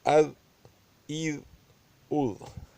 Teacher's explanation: زال کی ادائیگی نرم ہے، نرم اور پتلی، کیونکہ یہ حروف مستعلیہ سے نہیں ہے